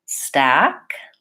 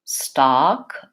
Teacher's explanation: Stack, forward. Stock, open and back.